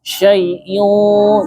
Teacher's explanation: kalau dia bertemu dengan qaf, qaf itu huruf isti'la, huruf yang tebal. Jadi ikfanya ikut tebal. Jadi jangan syai'in qadir, tapi syai'in, naikkan pangkal lidahnya.